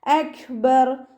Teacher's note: കാഫ് സുക്കൂനിലാവുമ്പോൾ കുറച്ച് എയർ പുറത്തോട്ട് പോണ സൗണ്ടിൽ വേണം ഉച്ചരിക്കാൻ.